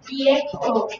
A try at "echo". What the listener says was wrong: 에코죠, 에코. 이에코가 아니고 에코. 에코. 에 소리 모음이죠.